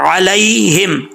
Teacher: عین کو کلیئر کرنا ہے، عین ہی پڑھنا ہے، حمزہ نہیں پڑھنا